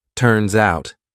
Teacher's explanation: So I'm using that S to glide to the next word, but I say it as one word.